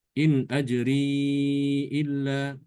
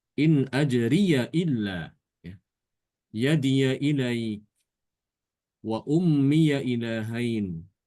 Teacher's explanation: Imam Syu'bah membaca dengan mensukunkan ya idhofah. Adapun Imam Hafs membaca dengan fathah ya, memfathahkan ya idhofah.